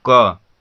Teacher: अगर आप क बोल रहे हैं तो क बोलने के बाद लास्ट में क्या अ आ रहा है, इसे अगर तोड़ना हो तो इसे हम तोड़ेंगे तो क क्या हो जाएगा, आधा क, आधा क को नीचे हलंत लगा देते हैं, ठीक है। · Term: व्यंजन वर्ण